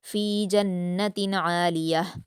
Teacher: اس میں نون مشدد ہے تو غنہ کریں گے اور جنتن کی تنوین کے بعد عین ہے تو یہاں اظہار کرتے ہوئے جلدی پڑھیں گے۔